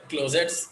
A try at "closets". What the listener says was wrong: Closes. T silent actually. वहाँ पे closes बोलना चाहिए.